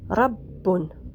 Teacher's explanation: La lettre Ra maintenant, c'est un R roulé, comme dans le mot Rabbun.